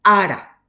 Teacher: La vocal tónica es A, no es la final, ¿verdad? Es la primera.